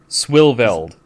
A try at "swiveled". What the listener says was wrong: There's no L there. That's not an L. it's if anything, it's a semicolon.